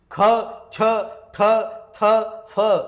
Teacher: जर उच्चार केला तर शेवटी ह चा उच्चार होतो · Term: महाप्राण